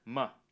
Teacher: my might be pronounced with a schwa when it's unstressed in Rapid speech